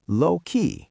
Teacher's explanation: dropping their pitch right on the word key